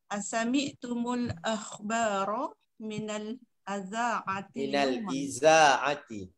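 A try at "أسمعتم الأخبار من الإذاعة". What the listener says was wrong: Sebab alif tu dia ada hamzah dia dekat bawah, jadi kita baca baris bawah.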